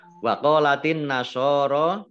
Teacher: Alif lamnya alif lam samsiyah tidak dibaca, langsung masuk ke huruf berikutnya yaitu nun ditandai dengan ada tasdidnya. Nun tasdid dibaca mendengung, ditahan 2 harokat.